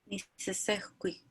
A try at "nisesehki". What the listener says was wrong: Almost, remember the U is silent. Nisesequi. Nisesequi. So remember CQ, C turns into an H.